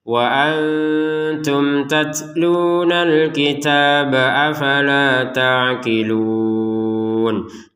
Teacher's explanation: Jadi ketika huruf ba yang barusan kita baca pantulan ini disambung dengan yang setelahnya, maka pantulannya hilang.